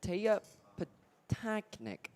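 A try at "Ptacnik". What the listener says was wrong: I have a feeling, I'm not for certain, but I have a feeling that P is, the P is silent.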